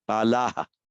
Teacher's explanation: with a strongly pronounced H with a shadow after it